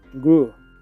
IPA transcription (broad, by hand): ɡruː